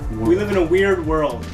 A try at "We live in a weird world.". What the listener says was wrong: Don't say it as fast. Just slow it down. Enunciate.